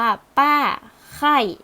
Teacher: เสียงโทคือระดับเสียงสูงลงมา